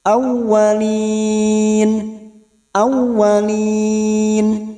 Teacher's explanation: Minal alif lam qamariyah, minal, minal alif lam qamariyah, minal aw masuk ke huruf waw yang bertasdid, hanya masuk tanpa mendengung, tanpa ditekan lama-lama, hanya masuk.